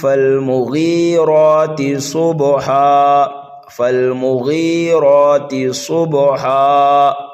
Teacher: فا کو ہم لام میں ملائیں گے